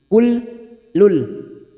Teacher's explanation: huruf lam duma tanwin bertemu lam namanya bacaan idgham bila gunnah, hanya masuk tanpa ditekan, tanpa mendengung. Kul lul, sebelumnya huruf kaf ini masuk dulu pada huruf lam, kul lul.